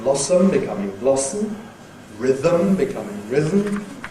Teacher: Schwa and M can make syllabic M